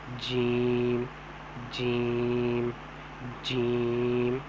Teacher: جیم جو ہے وہ زبان کا بیچ مقابل اوپر کے تالو کے ساتھ جب لگے گا تو جیم نکلے گا